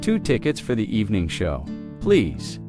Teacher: Stress evening show so it's clear.